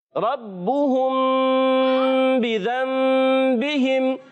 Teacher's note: را کو پر رکھیں گے